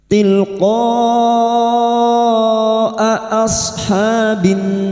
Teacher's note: Huruf hamzah memiliki sifat jar dan syiddah, yaitu tertahannya nafas dan tertahannya suara. Maka harus dibaca jelas.